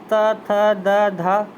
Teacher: दंत दंत यानी दांतों से बोले जाने वाले ता वर्ग